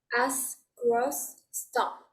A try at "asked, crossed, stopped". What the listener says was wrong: Maravilloso.